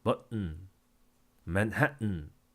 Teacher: 글로털 스탑 해가지고 글로털 우리의 성문이 스탑 막혔다. 성문 폐쇄다.